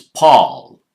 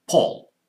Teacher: It's Paul in American, Paul, short O in British English.